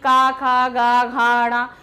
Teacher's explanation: स्पर्श व्यंजन का पहला वाला कंठ से ही बोला जाता है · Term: कंठस्थ ध्वनि